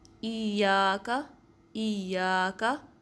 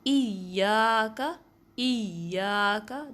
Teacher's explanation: ایک تو پریشر ڈالنا ہے، اس کے ساتھ ساتھ آواز کو بھی ریز کرنا ہے تاکہ پتہ چلے کہ ہاں تشدید ہے